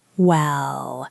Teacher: Specifically the well with a rising tone. Well, it signals hesitation.